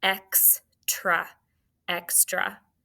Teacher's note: Tra is TRA. It's an open syllable exception because that A is making the schwa sound.